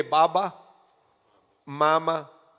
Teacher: The makhraj of the mim and the ba is the same, lips.